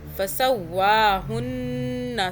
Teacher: یہاں پہ ہم 2 سیکنڈ کا غنہ کریں گے۔ فسواہن، نون کو ناک سے 2 سیکنڈ۔